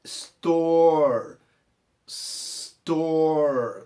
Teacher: Nós temos aquele hábito de botar esse som de I, mas os americanos não falam, nem os britânicos, esse som de I que a gente tem o hábito de falar antes desses S